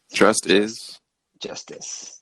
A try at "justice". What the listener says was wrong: You kind of pronunciated it like it was just is.